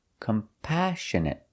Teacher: Our next word is compassionate. We put the stress on the second syllable.